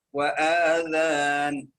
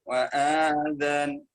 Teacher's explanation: بعض الناس يقرأ كلمة وآذان بالمد فيقرأها هكذا وآذان، خطأ، وآذان، فهو جعل همزة القطع مد، جعلها مد بدل فمدها حركتين